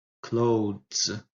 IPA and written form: kləʊðz (clothes)